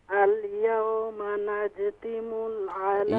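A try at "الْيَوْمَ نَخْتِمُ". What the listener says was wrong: यहाँ पर नून के बाद खा है, जीम नहीं है।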